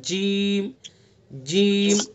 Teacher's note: زبان کا بیچ اور اس کے مقابل اوپر کا تعلق، بالکل اوپر، زبان کے بیچ کو وہیں سیدھا وہیں لگائیں گے، لے جا کر کے ادا کریں گے جیم جیم۔